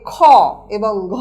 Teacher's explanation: প্রত্যেক বর্গে উচ্চারণ করতে গেলে শ্বাস বেশি লাগে বলে এগুলোকে বলা হয় মহাপ্রাণ ধ্বনি বা অসপিরেটেড সাউন্ড।